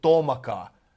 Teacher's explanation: we turn this O, once it is unstressed, into A.